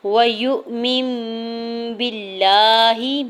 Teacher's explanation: نون ساکن کی آواز کو میم میں بدل کے پڑھیں گے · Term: اقلاب